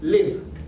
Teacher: Es decir, tenemos por ejemplo el verbo live, vivir, live. El último sonido es una V. Se siente la vibración en esta parte de atrás. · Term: sonido con voz